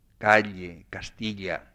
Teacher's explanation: un sonido que está en regresión en España, incluso en España, evidentemente, que es el sonido de la elle